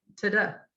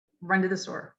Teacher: since they're unstressed they have that schwa sound